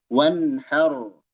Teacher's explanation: Di sana ada nun sukun. Idhar halqi. Nun sukun fin nuni ma'al ha. Nun menghadapi ha. Wanhar. Dibaca jelas.